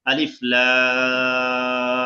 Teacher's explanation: >> আলিফ লাম মিমটা এভাবে গুনা করতে হবে কিন্তু লামটা আরেকটু টানতে হবে